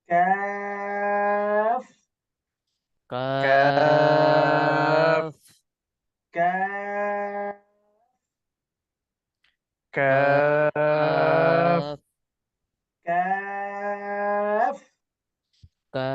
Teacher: জিহ্বার গোড়া থেকে একটু আগে বাড়াইয়া তারপর আবার উপরে তালুর সঙ্গে লাগাইয়া কাফ।